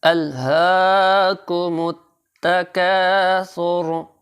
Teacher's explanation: الہاکم التکاثر، یہ ہا جو ہے سینے سے نکالنا ہے، یہ دو آنکھوں والا ہا سینے کی جانب سے نکلتا ہے، اور کھڑی زبر کی وجہ سے تھوڑا سا کھینچ کر پڑھیں گے۔